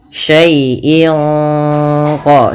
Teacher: Syai'in qadir ada bacaan ikhfa hakiki yang dimana suara tanwin pada lafal in disamarkan ke huruf qaf, yang mana qaf termasuk huruf ikhfa.